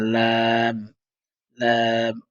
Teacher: জিহ্বার আগাটা সামনের উপরের এক পাশের দাঁতের গোড়ার সঙ্গে লাগিয়ে পড়তে হয়।